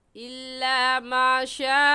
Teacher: इल्ला माशा अल्लाह में लफ्ज़ अल्लाह से पहले वाले लफ्ज़ के ऊपर ज़बर आ गया, इसलिए इस लफ्ज़ अल्लाह को पुर यानी मोटा करके पढ़ेंगे। और मोटा करने का तरीका कि आपके दोनों होंठ गोल हो जाए